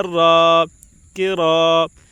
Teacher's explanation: الف سے پہلے زبر ہے، اس لیے الف مدہ ہوگا. الف مدہ کو 1 الف کے برابر کھینچ کر پڑھیں